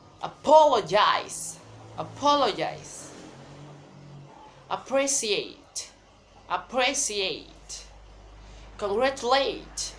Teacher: the first syllable is unstressed, the second syllable is primary stress, and the third syllable is unstressed, and the fourth syllable is secondary stress.